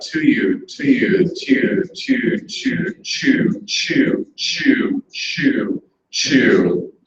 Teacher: use this palatalization that naturally happens in quick speech